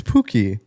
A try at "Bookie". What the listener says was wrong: It's Bookie with a B. So she was just one vowel off. Bookie.